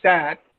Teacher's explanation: A as in sat is a front unrounded vowel between half open and open position